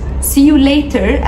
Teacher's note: later هو حرف T ما بين two vowel letters او حرفين متحركين، فبننطقه light D. مش لازم تنطق كده خالص، ممكن تقول سي يو ليتر عادي، يعني اشوفك مره ثانيه ان شاء الله.